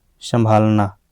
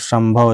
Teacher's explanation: संभालना में अनुनासिकता प्रकट होता है और संभव इसमें म का उच्चारण आता है